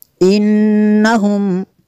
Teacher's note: نون مشدد ہے یہاں پہ غنہ کریں گے